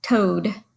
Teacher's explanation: 2 vowels together are O and A. The A is definitely silent there. All we hear is that long O sound.